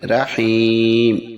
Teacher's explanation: جب وقف کریں گے تو میم کی زیر نہیں ادا ہوگی، ہم پڑھیں گے رحیم۔